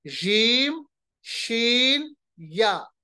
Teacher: यहां पर हम उस या की मिसाल देंगे जिस पे मद ना हो, गैर मद्दा। जीम, शीन और गैर मद्दा या, इन तीनों का मखरज क्या है? जबान का दरमियानी हिस्सा, यानी बीच, मिडल ऑफ द टंग, दरमियानी हिस्से को हम ऊपर की तरफ मिलाएंगे। बहुत आसान, ऊपर की तरफ मिलाएंगे दरमियानी हिस्सा।